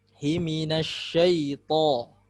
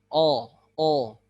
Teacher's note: Seperti seseorang mengucapkan huruf o tapi tidak monyong. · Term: huruf to